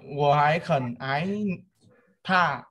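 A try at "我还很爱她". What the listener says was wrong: Ai chứ phải ái nhá. Ủa hái khẩn ai tha.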